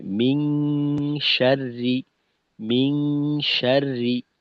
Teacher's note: তো এখানে আমরা শিন পরে পাতলা পাই, তো শিনের মাখরাজে থেকে গুন্নাটা করতে হবে